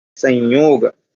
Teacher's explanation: ये जो सम का म है वो अनुस्वार हो जाता है